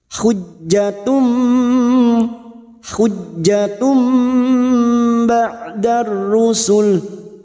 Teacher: kita siap membunyikan huruf ba mendengung selama dua atau tiga harakat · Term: bacaan iqlab